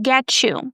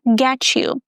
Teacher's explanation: When T is followed by Y, it makes the ch sound.